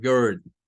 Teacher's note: dice se escucha algo que no es una y sino que es un sonido entre una e y una u